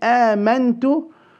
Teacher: Extend the mad of إني and then آمنت. We will read the noon with إخفاء into the تا.